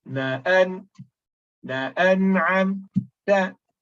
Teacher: we stop at nun sakinah as though there is a sakta